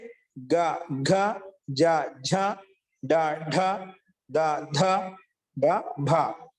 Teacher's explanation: సమృత కంఠం చేత ఉచ్చరించబడతాయి, నాదంతో యుక్తమై ఉన్నాయి, ఇంకా ఘోషవంతమైనవి